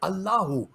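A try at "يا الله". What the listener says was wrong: ओ नहीं पढ़ना, अल्लाहु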